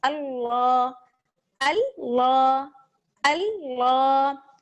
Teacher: اللہ میں آپ کو پتہ ہے کہ لام جو ہے وہ موٹا پڑا جائے گا. جی لام موٹا پڑا جائے گا کیونکہ اللہ کے لام سے پہلے جو ہے حمزہ ہے، اور حمزہ پر زبر ہے.